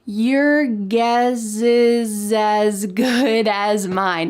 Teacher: At the end of the word guess and at the end of the word is, there is an S. But in American English pronunciation, we often link the S with the vowel next to make a Z sound.